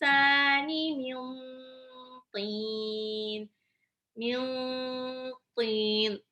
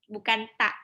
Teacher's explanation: To itu ujung lidah bertemu dengan pangkal 2 gigi seri atas. Jadi ujung lidah seperti mau nendang gigi seri atas.